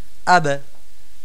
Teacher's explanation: যে আপনার উচ্চারণের জায়গাটাতে একটু বাড়ি খাবে বাড়ি খাবে মানে একেবারেই উচ্চারণের স্থানে গিয়ে থেমে থাকবে না বরং গিয়ে বাড়ি খেয়ে আবার উঠে আসবে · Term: কলকলা